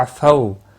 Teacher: واو لین ہے، تھوڑا نرمی کے ساتھ کھینچ کر ادا کریں گے۔